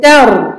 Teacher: Donc ici le ra, premièrement, on lui donne une durée moyenne, al-bayniya, parce qu'il est sakin.